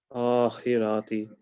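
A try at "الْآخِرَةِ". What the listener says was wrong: Remember, don't stretch your harakat. Yeah, that's a harakat.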